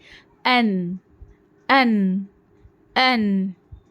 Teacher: زبان کی نوک ہمیں ڈائریکٹ ثنائے علیہ کے مسوڑوں کو لگانا ہے، ناپ تک نہیں لگانا ہے، ثنائے علیہ کے مسوڑوں کو لگانا ہے. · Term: نون